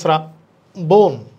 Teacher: এরপর দেখি শ্রাবণ, শ্রাবণ শব্দের উচ্চারণ, শ্রাবণ, এখানে লেখা আছে শ্রাবণ, হবে না, এখানেও শ্রাবণ তালব্য হবে না, যেহেতু তালব্যর সাথে র ফলা আছে, তালব্যর উচ্চারণ ইংরেজি এস এর মতো হবে, ইংরেজি এস মানে তখন দন্তস্বর দিতে হবে, তাহলে শ্রাবণ না, এটা হবে শ্রাবণ 2 নম্বরটা।